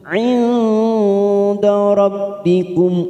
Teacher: Langsung masuk pada huruf mim sukun bertemu ain idhar safawi, kita baca jelas kum. Nun sukun bertemu dal ikfa aqrab, kita samarkan 3 ketuk.